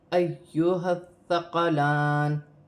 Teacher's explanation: ایھا یا مشدد ہے، یا کو حمزہ کے ساتھ ملا کر پڑھا جائے گا، ہا کو ثا کے ساتھ ملا کر پڑھا جائے گا، ثا مشدد ہے اور نرمی والا حرف ہے، نرمی سے ادا کیا جائے گا۔ لام پر کھڑی زبر ہے، ایک الف کی مقدار کھینچ کے پڑھا جائے گا۔ ثقلان، وقف کی صورت میں زیر گر جائے گی اور نون ساکن ہو جائے گی۔